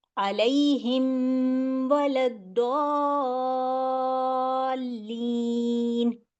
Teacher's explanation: ہم نے خاص خیال رکھنا ہے کہ اس میں میرا میم واضح ہو